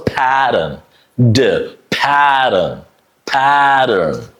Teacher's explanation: the t is also pronounced like a d sound because after the t and before the t there are two vowel sounds. So it's a pattern.